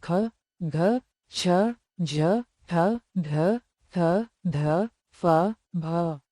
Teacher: महाप्राण व्यंजन वे हैं जिनके उच्चारण में अधिक हवा निकलती है।